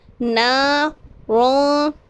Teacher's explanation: نون الف زبر نا ہے، یہاں پر ہمیں ایک الف کھینچنا ہے